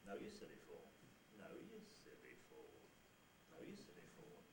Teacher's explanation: the nuclear syllable is midish pitch, or low, mid to low pitch. The syllable after the nucleus is high, and then all of the other syllables are low and level. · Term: rise fall